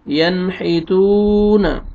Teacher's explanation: یہاں پہ دیکھیں حروف حلقی میں سے حا آ رہا ہے، یہاں پہ آپ نے اظہار کرنا ہے، اور آگے واو مد ہے، واو جزم سے پہلے پیش ہے، تا کو آپ نے کھینچنا ہے، ینحیتون۔